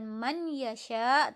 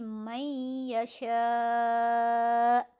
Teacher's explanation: Idgham bi gunnah, nun sukun atau tanwin un bertemu dengan salah satu huruf idgham bi gunnah. Nah, di sini bertemu dengan ya, berarti nunnya ini melebur ke ya. Bacanya bukan man yasha tapi may yasha.